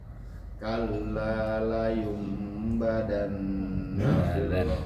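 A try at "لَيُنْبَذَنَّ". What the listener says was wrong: Kan ada titiknya. Ada titiknya kan. La yumbadan. Da, bukan da. Bukan huruf da.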